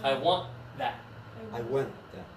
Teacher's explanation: We don't say it. The T is not pronounced.